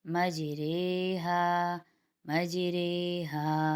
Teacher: مجریہا کی رو کو قطرے اور سویرے کی طرح باریک پڑھیں گے۔ یعنی اب وہ والی بات آپ لوگوں کی سمجھ میں آ گئی ہوگی جو میں نے شروع میں بیان کیا کہ مجریحہ کا مطلب ہوتا ہے زبر اور زیر کے درمیان پڑھنا۔ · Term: امالہ والی رے